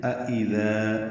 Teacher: أَإِذَا دو حمزہ ہیں، دوسرا حمزہ ویسے تسہیل سے پڑھتے ہیں أَإِذَا یعنی نرمی سے، دال نرمی سے پڑھا جائے گا، دال الف مد ہے، دو حرکات لمبا ہے.